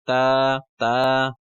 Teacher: जबान की नोक और ऊपर वाले जो सामने वाले सनाया है उनकी जड़ से नोक लगाएंगे तो ता अदा होता है